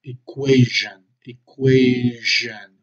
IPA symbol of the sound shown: ʒ